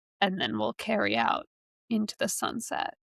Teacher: grind out in a vocal fry prestige drama sort of way